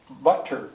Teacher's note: the American way to say butter, that sounds like a D